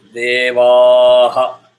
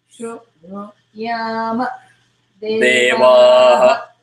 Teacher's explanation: Vaha is that long because Visarga follows exactly the preceding syllable, which is Va. Va is Dhirgam, so Visarga also will have Dhirgam.